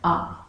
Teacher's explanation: सबसे पहले है विवृत स्वर। जिन स्वरों के उच्चारण में मुख द्वार पूरा खुलता है, ऐसे स्वर विवृत स्वर कहलाते हैं।